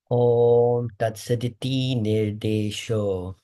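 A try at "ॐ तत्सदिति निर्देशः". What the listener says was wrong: Nirdeshaha. O we pronounce as aha.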